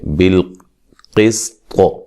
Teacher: बिल क़िस्त क़ाफ को मोटा अदा करेंगे, सीन को बारीक और ता को भी मोटा अदा करेंगे और क़लक़ला भी करेंगे वक्फ़न